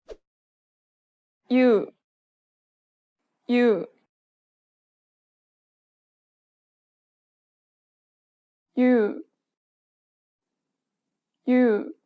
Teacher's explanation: they sound almost the same as u in English but with a shorter y